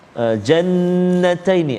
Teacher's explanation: ada wajib al-ghunnah, dengung dua harakat